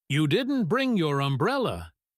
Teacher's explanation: He said it with his voice dropping very low at the end, and he stretched out the word didn't.